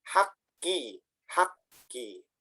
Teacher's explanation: Yang pertama hurufnya disukunkan terlebih dahulu, dimatikan, baru huruf keduanya dibaca hidup. Mengikuti harokat yang harokat tersebut. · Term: Tasydid